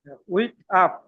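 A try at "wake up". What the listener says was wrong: উইক না বলে ওয়েক আপ। ওয়েক আপ, জাগ্রত হওয়া।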